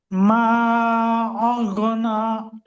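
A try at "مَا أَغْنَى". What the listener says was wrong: মাশাআল্লাহ।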